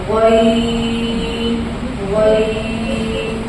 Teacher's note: غین کا مخرج آخری حلق سے غین ادا ہوتا ہے